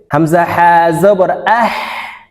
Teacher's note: হালুকের মধ্যখান থেকে উচ্চারণ করতে হবে